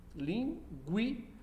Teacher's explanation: Na palavra linguiça é o mesmo processo, em que o U, lingui, o U vai ser semivogal e o I vai ser vogal